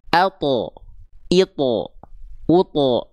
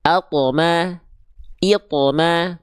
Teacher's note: Huruf th ketika sukun harus mantul. Harus memantul karena punya sifat qalqalah.